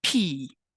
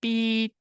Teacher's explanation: accent you should not feel any air move against your hand the Blackfoot voiceless stops p t and K are not aspirated this absence of aspiration makes them often sound like their voice